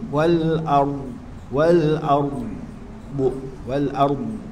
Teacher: ard ni ya dia baca bacaan rum maka ra tu dibaca dengan tebal